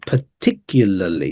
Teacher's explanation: the stress on the second syllable